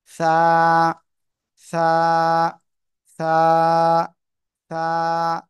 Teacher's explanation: জিব্বার আগা, এই উপরে দুই দাঁতের আগায় লাগান লাগান লাগান, লাগিয়ে নরম করে হালকা বাতাস বের করে উচ্চারণ করতে হবে।